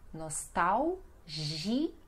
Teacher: Veja que aqui nós temos aquele L sozinho, então som de U